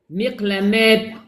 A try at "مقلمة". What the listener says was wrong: Non. Ta, je répète, se prononce comme ha. Ha de hello. Ha, il y a de l'air qui sort. Miqlamah.